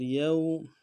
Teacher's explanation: واو لین ہے، واو لین کو نہیں کھینچیں گے، واو مدہ کو کھینچنا تھا، واو لین نہیں کھینچیں گے، واو ساکن اس سے پہلے زبر ہو یا زیر ہو واو لین کہلاتا ہے۔